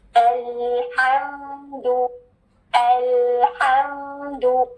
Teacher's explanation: लाम और मीम दोनों साकिन है और दोनों की सिफ्त है कि इनकी आवाज थोड़ी सी चलती है, ठीक है? सख्ती से रोकनी और काटनी नहीं होती आवाज, वरना वो लेटर हिल जाता है, ठीक है? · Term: मीम साकिन